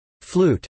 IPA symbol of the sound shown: u